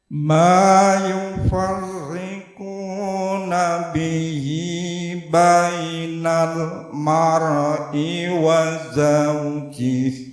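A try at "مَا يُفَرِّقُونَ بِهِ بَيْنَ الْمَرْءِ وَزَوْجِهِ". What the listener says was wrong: Ya, sekarang bocornya di ro. Mar. Nah, itu jangan ada pantulannya. Mar'i. Nah, langsung mar'i. Bainal mar'i wa. Nah, jadi kalau tadi bainal mar'i mar.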